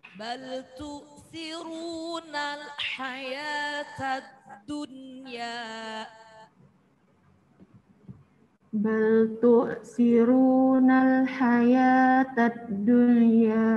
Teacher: Dalnya ada tasjid berarti ditekan.